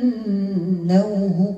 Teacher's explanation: نون مشدده غنه مقدارها حركه